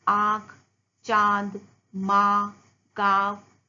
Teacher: अनुनासिकता का उच्चारण नाक और मुंह से किया जाता है।